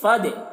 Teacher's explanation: گے فد یہ الف کو نہیں پڑھا جائے گا فد اور دال میں قلقلہ بھی کر رہے ہیں